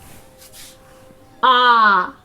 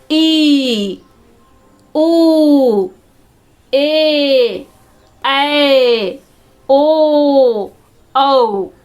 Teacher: दीर्घ स्वर को उच्चारण करने में हर्ष स्वर से अधिक समय लग रहा है, 2 गुना समय लग रहा है